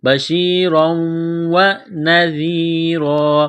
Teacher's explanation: کے ساتھ ملانا ہے را کے اوپر دو زبر تنوین ہے تنوین کے بعد واو مشدد ہے تنوین پر غنہ کریں گے